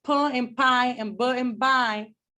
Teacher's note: they're both bilabial stops because my lips are coming together and then coming apart but their difference lies in voicing right is voiceless bo is